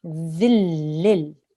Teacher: We are going to join the dal straight to the lam without the noon sound. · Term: assimilation